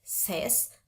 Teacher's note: pakai Z sound bukan pakai S sound